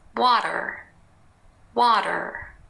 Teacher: the T has changed and became a a very light tap it's not the same as the D it's shorter and it's